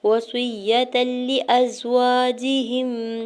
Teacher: وصیۃ، واو کے زبر کو جلدی سے ادا کرنا ہے، صاد کی زیر کو یا شدت کے ساتھ ملاتے ہوئے پڑھنا ہے، یا کے زبر کو کھینچنا نہیں ہے، تاکہ دو زبر کے تنوین کو لام شدت کے ساتھ ملا کے پڑھیں گے۔ یہاں پہ ادغام بغیر غنہ کے رول ہوگا، یعنی ملا کے پڑھیں گے لیکن غنہ نہیں کریں گے۔ وصیۃ لأزواجہم، لام کی زیر کو جلدی سے ادا کرنا ہے، حمزہ کے زبر کو زا ساکن کے ساتھ ملاتے ہوئے پڑھنا ہے۔